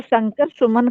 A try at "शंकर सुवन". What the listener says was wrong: शंकर सुमन नहीं है, शंकर सुवन। सुवन, वन।